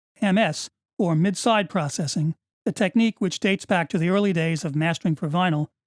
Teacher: The upwards inflection of the last two words clearly leads into a follow-up comment, which would now be gone.